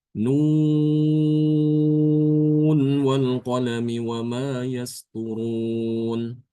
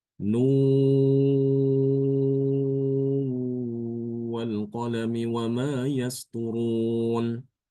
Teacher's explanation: Imam Hafiz membaca dengan izhar sedangkan Imam Sybah membaca dengan mengidghamkan nun ke dalam wawu disertai dengan ghunah